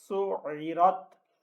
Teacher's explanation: اب یہ را جو ہے یہ پر کر کے پڑھا جائے گا اور یہ تا باریک پڑھا جائے گا